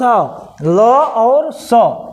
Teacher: ल और स किससे बोला जाएगा? दंत से।